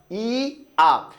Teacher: ই আ দুইটা স্বরধ্বনি একসাথে যুক্ত হয়ে যদি উচ্চারিত হয় তবে সেটাকে আমরা কি বলবো যৌগিক স্বরধ্বনি বলবো